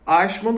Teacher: é um som palatal que não existe em português